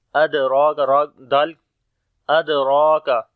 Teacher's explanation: دال کے اوپر جزم ہے، قلقلہ کریں گے، کمزور قلقلہ ہوگا، را کو موٹا پڑھیں گے، کھڑی زبر ہے اس کے اوپر لمبا بھی کریں گے، کاف کو باریک پڑھیں گے۔